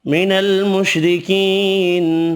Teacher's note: را باریک پڑھیں گے زیر کی وجہ سے، یا مدہ ایک الف کی مقدار میں کھینچ کر پڑھیں گے، نون ساکن پڑھنا ہے وقف کی صورت میں.